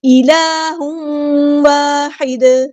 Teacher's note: یہاں پہ دیکھیے تنوین کے بعد آیا ہے واو، تو یہاں پہ ہو رہا ہے ادغام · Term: ادغام ناقص مع الغنہ